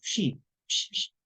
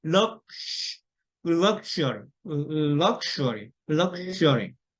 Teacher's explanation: 쉬, 쉬, 쉬. 그러니까 목을 울리지 않고 속삭이는 소리로 입술을 오므리고 길게 소리를 끌어주는 겁니다. 이게 쉬입니다.